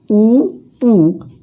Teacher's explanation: ऊ का उच्चारण स्थान ओष्ठ से है।